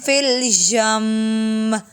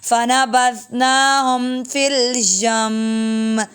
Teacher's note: میم مشددہ غنہ ہوگا